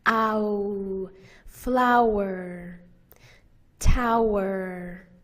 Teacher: Kite, fight, a, the diphthong a, ate, late, o, the diphthong o, vote, goat, ow. This is a diphthong vowel, ow. It has two sounds in it, a and oo. Ow. You glide from the first sound to the second sound.